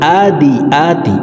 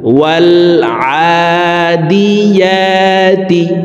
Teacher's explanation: আইনের উচ্চারণ হলকের মধ্যখান থেকে পড়তে হবে, ইয়ার উচ্চারণ জিহ্বার মধ্যখান থেকে পড়তে হবে।